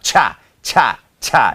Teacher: ให้ลมพ่นออกไปจากปากมากๆนะครับ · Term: CH